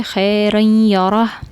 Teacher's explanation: تنوین کے بعد یہاں پر را کے اوپر تنوین ہے اور اس کے بعد یا ہے جو کہ ادغام ما غنہ یہاں پہ کریں گے